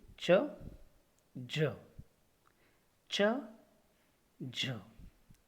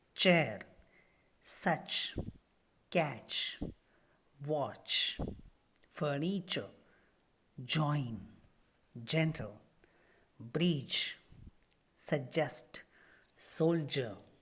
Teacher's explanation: the tip and front part of the tongue has touched to the hard palate.